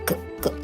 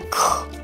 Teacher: 有一个▁H▁就是送气音，就会变成可能注音符号比较符合的就是咳，对，送气出去这样子 。对，有没有越来越有概念了，对不对？然后接下来又是一个鼻音，又是一个我们的鼻音的部分。对，然后这个▁NH▁是一开始对不起，这个▁NG▁的部分啊，是说一开始其实也不懂它是什么东西，我只能硬去记它就是注音符号的就是这样子。当然，因为这是台语跟台语有对，那参像是英语啊，跟日本还是跟华语，他们都会有他们自己的就是特别的字，就那参像有一寡物件是通用的，但是有一些东西。有些东西就是这个语言独有的，对。可是到